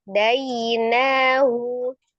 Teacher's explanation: Na-nya panjang, hu-nya pendek.